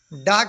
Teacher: स्पर्श मूर्धन्य अल्पप्राण घोष व्यंजन